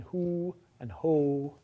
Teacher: So in English, the back non-low vowels, the back high and the back mid vowels, are rounded. In who and ho, your lips have to round to make those vowels.